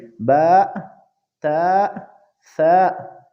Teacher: بعض لوگ ان حروفوں کو جیسے با، تا، ثا، ان کو ادا کرنے میں آخر میں حمزہ پیدا کرتے ہیں